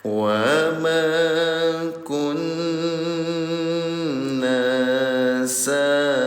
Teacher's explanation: Ya, namanya tasydid. Nun dalam keadaan tasydid namanya gunnah. Cara bacanya dengungkan selama 2 harokat.